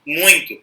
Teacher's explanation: Porque em muito nós temos o I nasal. A gente não fala muito, a gente fala muito.